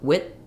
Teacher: I'm not really saying a d I'm not saying wi with I'm just stopping the air for the D and then letting the th out with so if I'm saying with my I vowel goes right